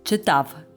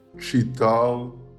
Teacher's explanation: the masculine past tense in Ukrainian ends with a V sound instead of the dark L of Russian